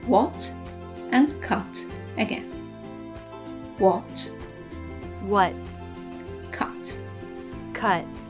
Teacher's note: in American English they tend to drop the T in the final position